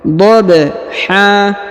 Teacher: huruf ba berharakat sukun maka dia dibaca pantul atau Qalqalah